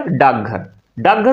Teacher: डाकघर हो जाएगा। यह क है अपने आप तीसरे में यानी कि ग में परिवर्तित हो जाएगा